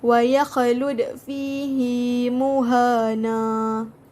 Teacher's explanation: Jadinya cara bacaannya ialah dengan menggugurkan bunyi tanwin ataupun menggantikannya dengan sebutan fathah biasa, iaitu dengan kadar 2 harakat sahaja ketika waqaf. Jadinya seperti akan menjadi wa yakhlud fihi muhana. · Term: mad iwad